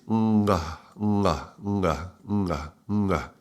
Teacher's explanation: The tongue goes back, it touches the upper palate in the back, in the velar area, and then is released.